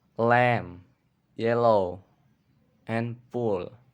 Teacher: itu untuk yang voice alveolar lateral approximant